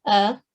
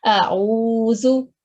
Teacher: alif has a soft sound a, and ain is articulated from the middle of the throat.